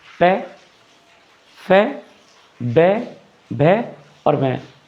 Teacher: कहीं ना कहीं आप इसमें सिर्फ होठों का इस्तेमाल कर रहे हैं। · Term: ओष्ठ